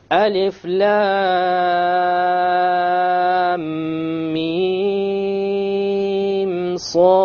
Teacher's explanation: So there's a ghunna between the lam and the meem, and there's no ghunna between the meem and the صاد. You also have a qalqala.